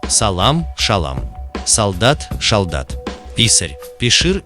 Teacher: типичное для северо-восточных говоров осетинского языка произношение топонима, где «с» звучит как «ша», даже в заимствованиях